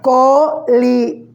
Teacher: Si la palabra colibrí, que tiene 3 sílabas, colibrí, y me doy cuenta que la sílaba tónica aparece al final en la última sílaba, entonces será una palabra aguda.